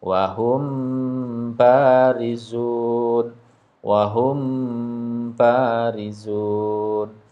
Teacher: mim sukun ketemu dengan ba ya dia dibaca samar ke huruf ba kemudian ditahan mendengung dua harakat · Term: Ikhfa Syafawi